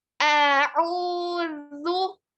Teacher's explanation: Lidahnya keluarkan sedikit, ya. Keluarkan sedikit ujung lidahnya ke tempat ketemu sama ujung gigi di atas. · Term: huruf zal